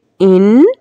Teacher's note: یہاں پہ نون مشدد ہونے کی وجہ سے ایک الف گنہ کر کے پڑھیں گے